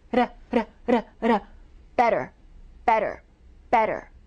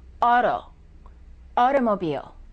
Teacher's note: For example, the word water, the T is between two vowels. When the T is between two vowels, it changes and it becomes what we call an almost D or a fast D.